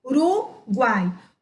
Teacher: Ao separarmos essas duas palavras aqui, vocês vão observar que a palavra ficaria Uruguai. Olha só como o som do A é bem mais forte do que o U e bem mais forte do que o I. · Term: tritongo